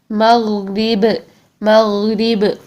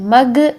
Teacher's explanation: غین میں آپ کی گاف والی ساؤنڈ نہیں آنی، مگ نہیں ہونا چاہیے